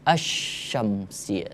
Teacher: Kalau asy-syamsiyah, nggak ada al kita sebut. Tapi langsung a-nya melebur ke huruf ketiga.